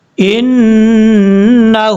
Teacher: نون کے اوپر شد ہے غنہ کریں گے ، آگے ہا ہے،